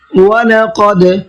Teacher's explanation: قاف کو منہ بھر کے پڑھنا ہے اور دال میں قلقلہ کرنا ہے، اس لیے کہ دال بھی حروف قلقلہ میں سے ہے اور اس کے اوپر جزم بھی ہے۔